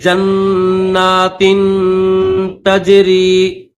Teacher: جیم کو نون کے ساتھ ملا کر پڑھیں گے اور یہاں پر غنہ کریں گے